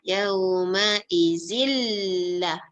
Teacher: Bila kita baca izil, terus masuk dalam lah. Tak boleh baca dengung.